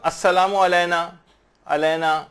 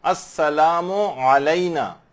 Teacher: عین کی آواز نکلنی چاہیے، الف کی نہیں نکلنی چاہیے